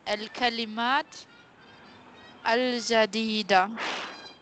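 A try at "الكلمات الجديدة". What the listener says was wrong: Join ta with lam. Remember the last lesson. Al silent.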